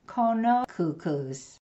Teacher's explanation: don't forget to pronounce those glottalized K's